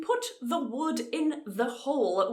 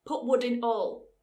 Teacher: in Yorkshire the word the kind of disappears we just use a glottal stop so to put the wood in the hole would be Standard